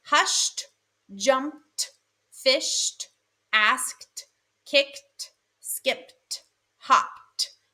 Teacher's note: The unvoiced sound of suffix ed is t. · You can hear the T very clearly at the end of all of those words.